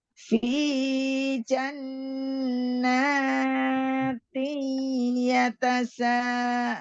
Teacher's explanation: Dengan ya, maka idgham bigunah dengung.